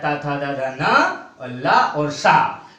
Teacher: तो ये लिरी तावर्ग, तावर्ग में आता है ता, था, दा, धा, ना और ला और सा, ये दंत से निकलने वाले वर्ण हैं, क्योंकि जिह्वा जब दंत से स्पर्श करती है तब इन वर्णों का उच्चारण होता है